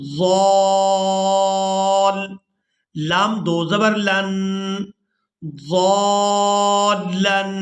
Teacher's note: ضاد کو الف مدہ اور مد کی وجہ سے کھینچتے ہوئے لام مشدد کے ساتھ ملانا ہے